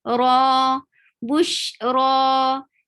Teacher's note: raw is 2 counts long, and raw is heavy. Whenever raw is heavy, the sound of the it is something like this.